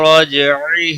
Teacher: را زبر کی وجہ سے پر پڑا جائے گا، جیم ساکن پر قلقلہ ہوگا، باقی عین کو کھینچنا نہیں۔